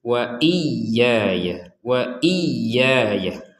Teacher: ya yang pertama ini harus ditekan karena ada tasydidnya, harus lebih dan berbeda dengan ya yang kedua